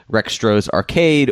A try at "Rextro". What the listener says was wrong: Wait, no, but the X is silent. It's retro, right? Even when you try to do it, you still bungle the name.